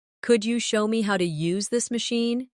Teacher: Could you becomes could ya in casual rhythm.